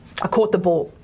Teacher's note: we've got the vowel or and that's a long vowel in australian english